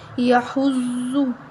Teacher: زواد موٹا پڑھیں گے، حروف مستعلیہ ہے